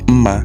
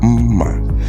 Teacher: Remember the first one is ma, which is high tone, mid tone, but this one is high tone, low tone.